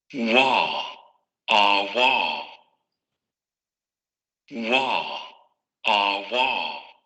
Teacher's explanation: Se sube la lengua hacia la parte del velo, pero se deja el espacio para que salga el aire de manera continua, sin llegar a la fricación, ni sin abrirla tanto como para llegar a una vocal. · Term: labiovelar